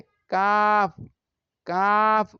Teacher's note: ৫ number মাখরাজ, জিহ্বার গোড়া থেকে একটু আগে বাড়িয়ে তার বরাবর উপরের তালুর সঙ্গে লাগিয়ে কাফ কাফ উচ্চারিত হয়